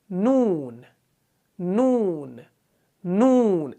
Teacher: نون کا مخرج بھی آپ کو معلوم ہوگا، یعنی زبان کی جو ٹپ ہوتی ہے، رأس لسان جو ہوتی ہے، نوک جو ہوتی ہے زبان کی، یہ جب اوپر تالوں سے لگتی ہے تب جا کے نون ادا ہوتا ہے